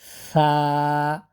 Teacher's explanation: জিহ্বাটা বের করে উপরের দাঁতের সাথে দাঁতের মাথার সাথে হালকা করে লাগিয়ে বাতাস সহকারে উচ্চারণ হবে